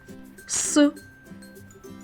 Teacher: Звук С глухий, тому що горло наше мовчало.